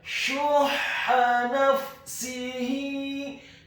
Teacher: Kata syuhha, Huruf shin atau sha-nya dibaca tafkhim tebal, dhamma 1 harokat. Kemudian huruf ha-nya dibaca tipis, tarqiq nyaring dan halus. Ditasydidkan, ditekankan fathah, cukup 1 harokat saja.